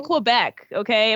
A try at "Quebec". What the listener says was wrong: You pronounced it Quebec. You pronounced it like Americans do. I've always been told it's Quebec, like with a K, Quebec. Quebec.